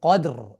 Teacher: কিন্তু যখন আমরা সাকিন করছি এই আয়াত হিসেবে, যখন আমরা থামছি এখানে, তখন তো আমরা কফ ফাতহা এইটার উপর ভিত্তি করে আমরা রকে সুকুন করছি, কদর, এই জন্য রটা তখন মোটা হবে